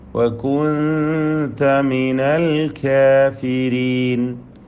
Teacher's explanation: വകുൻത സാക്കിനത നൂനിനെ അവ്യക്തമാക്കി മണിക്കണം. ഇഖ്ഫാ ഹഖീഖി.